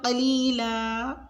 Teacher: وقف کی صورت میں ہم ایک زبر کو پڑھتے ہیں اور ایک کو چھوڑ دیتے ہیں، یعنی قلیلاً وقفاً قلیلا۔